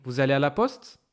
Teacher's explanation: In question, the tone goes up on the last word. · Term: phrase interrogative